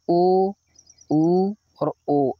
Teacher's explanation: ओ ऊ और ओ इनको बोलते समय वृत्ताकार होट हो जाते हैं लेकिन अ को बोलते समय नहीं होते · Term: वृत्ताकार स्वर